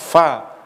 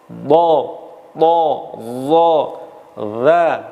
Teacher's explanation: Idbaq ini lidah bagian depan melekat artinya terangkat dan terkatup ke langit-langit.